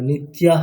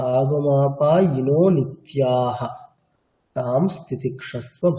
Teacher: নিত্যাহ, ওখানে আমরা ওই পরবর্তী যে দন্তীয় স আছে সেটাকে বিসর্গে পরিবর্তিত করে নিয়ে উচ্চারণ করছি